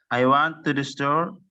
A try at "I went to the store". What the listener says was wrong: I went, bukan I won. I went. N-nya nggak kamu baca itu gimana?